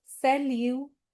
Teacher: this is ending with T and we are not pronouncing that T क्योंकि CRFL में से कुछ नहीं है इसके end में.